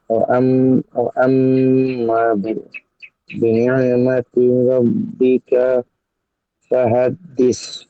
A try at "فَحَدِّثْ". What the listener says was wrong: ফাহাদ্দিস, একটু নরম করে তা।